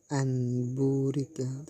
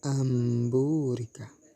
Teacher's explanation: dengan merapatkan dua bibir serta berdengung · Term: iklab